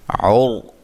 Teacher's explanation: را کو موٹا ادا کریں گے، را ساکن سے پہلے پیش ہے۔ وا کو موٹا ادا کریں گے۔